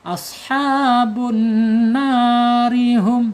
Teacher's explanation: Beda halnya ketika diwasol. Ini ro-nya akan tarqiq atau tipis